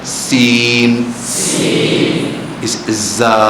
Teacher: ایک جیسی سیٹی جیسی آواز ہوتی ہے، اب پڑھیے سین، زا، یہ سیٹی والی